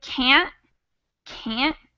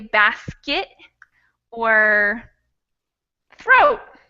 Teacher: it's a stop in my throat